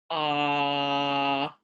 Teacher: on the other hand if you do a vowel like ah you should feel that it's at the back and your tongue's down so it's at the back and it's at the bottom so